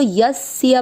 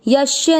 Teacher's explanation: आपको इसको यस्य पढ़ना है, यश्य नहीं। कुछ लोग स को श पढ़ते हैं